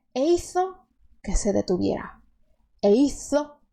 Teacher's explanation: Você só não vai fazer o som de S se você estiver estudando a pronúncia da Espanha, que lá acontece o fenômeno linguístico chamado el ceceo, que é que você escuta eles falando com a língua entre os dentes